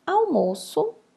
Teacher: sílaba tônica mo, paroxítona, porque é a penúltima sílaba tônica